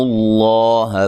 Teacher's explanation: لفظ اللہ کو موٹا ادا کرنا ہے. اس سے پہلے حرف پر پیش ہے